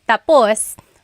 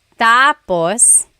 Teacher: the emphasis is at the end, tapus, that means finished. When the emphasis is on the first syllable tapos then it means next.